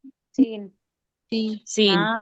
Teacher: तो सीन में सरसराहट होती है